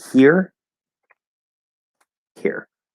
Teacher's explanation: i would underline the e and the r to show that there it's an r colored e